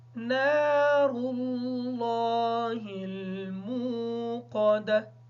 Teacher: نار اللہ کی جو را ہے اس کو پر پڑھیں گے، لفظ اللہ کا لام بھی پر پڑھا جائے گا